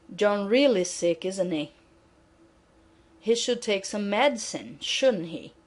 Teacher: if your voice goes down falling intonation at the end of a tag question you are hoping that the listener will agree with you